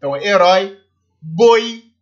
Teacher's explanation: são ditongos decrescentes que a primeira é mais forte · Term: ditongo decrescente